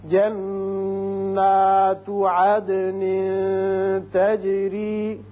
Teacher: عدن یہاں دال کی صفت قلقلہ ادا ہوگی